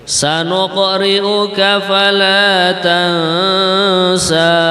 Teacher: Nah, di sini ada contoh bacaan qalqalah, sanuq gitu. Nah, qaf sukun ya, dibaca memantul